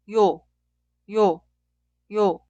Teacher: Vocal yo se clasifica como vocal simple, pero fonéticamente es una vocal doble. Por eso el sonido inicial es I e instantáneamente termina con O. Cuidado, suena como un solo sonido, no dos sonidos separados y O.